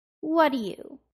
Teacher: combining the T and D causes you to delete the T in what and just say the D from do